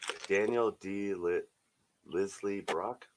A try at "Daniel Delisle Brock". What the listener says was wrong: Daniel Delisle. You don't pronounce the S. So Delisle, French.